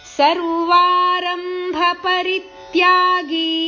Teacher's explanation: ಗಿ ಇಲ್ಲಿ ದೀರ್ಘ ಇದೆ ತ್ಯಾಗಿ ಸ್ವಲ್ಪ ದೀರ್ಘ ಇಡಬೇಕು